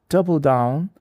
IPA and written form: ˈdʌb.əl daʊn (double down)